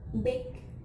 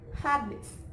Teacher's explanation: two lips are put together, and vibration or voice bilabial stop